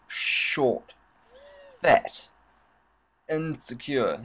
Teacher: he's stressing the first syllable of each word